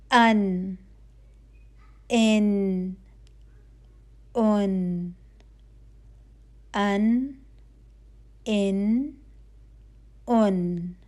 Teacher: तो अन ये नून की आवाज आएगी ठीक है तो आपके नून की आवाज जो है वो नाक से बाहर आएगी इसलिए कि नून में गुन्ना की क्वालिटी है